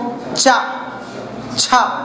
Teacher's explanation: इन वर्णों के उच्चारण करने के दौरान मालूम है जीभ तालु में घिसती है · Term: तालु वर्ग